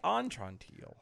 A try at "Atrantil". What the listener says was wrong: Atrantil. No, not on.